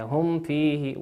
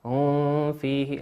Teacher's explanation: والفاء من حروف الإظهار، هذه في أحكام الميم الساكنة نظهرها كما هي